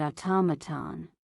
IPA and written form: ɔːˈtɒmətən (Automaton)